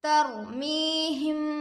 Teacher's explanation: ترمیہم بحجارۃ، تا پر زبر کی حرکت ہے، جلد پڑھے، रॉ पर जज़म है, रॉए साकिना होगा, रॉए साकिना से पहले ज़बर आकर है, रॉए साकिना को पुर पढ़ेंगे